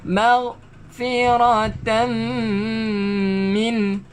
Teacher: tanwin tak selari bertemu dengan mim, dengungkan dan memasukkan